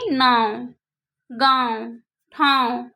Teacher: इस उच्चारण जे नाक और मुंह से होए और छोट रहेला उसको बोलते हैं अनुनासिक।